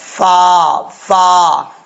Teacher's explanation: फ को पढ़ते वक्त आपने होठ गोल नहीं करने ऊपर वाले दांतों का किनारा और नीचे वाले होठ की तरी वाली जगह पर लगेगा तो फा पढा जाएगा